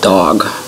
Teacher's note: like it's curled up on the top of my mouth and there's not really a puff of air or anything comes with it